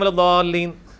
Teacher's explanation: ولضالین میں جو الف کے اوپر بڑی والی مد ہے وہ 5 الف تک کھینچی جاتی ہے, یعنی 10 حرکات کی لینتھ کے برابر. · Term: مد واجب